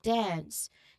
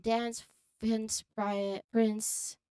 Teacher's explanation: the N sound transitions smoothly into the S sound right at the end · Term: NS cluster